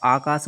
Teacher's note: तो पश्च, जैसे आप आकाश बोलते हो तो जीभ का पिछला वाला भाग जाना सहायता करता है। तो बड़ा आ एक पश्च स्वर है